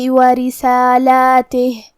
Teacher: را کے نیچے زیر ہے تو را کا حکم ہے ترقیق، ہم حرف الرا کو پتلی آواز میں پڑھیں گے